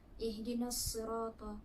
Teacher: huruf alif lam bertemu dengan huruf syamsiah iaitu sad. Perlulah dibaca idgham. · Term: alif lam syamsiah